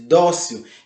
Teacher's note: a sua sílaba tônica é a penúltima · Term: paroxítona